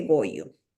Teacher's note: consiste en pocas palabras en cambiar una r por una y por ejemplo em en lugar de decir gorro te dice Goyo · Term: diptongación